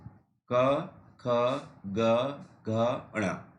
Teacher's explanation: इनका जो उच्चारण स्थान है कंठ है, यानी कंठ का मतलब हमारा जो गला है, और कंठे, इनका नाम है कंठे, क्योंकि ये कंठ से बोले जाते हैं इसलिए इनको कंठे बोलते हैं। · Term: कंठ व्यंजन